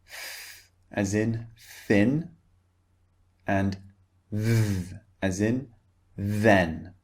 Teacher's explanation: What we do is we put the tongue against our top teeth, like this. And then we push the air through the gap between the teeth and the tongue. And this produces air and produces the sound that we want. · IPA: θ and ð